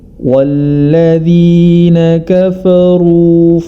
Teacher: huruf ro yang berharokat dhammah dia dibaca tebal. Dan hati-hati huruf setelah atau sebelumnya, yakni huruf fa sebelumnya dan huruf fa pada setelah huruf ro dibaca tebal juga.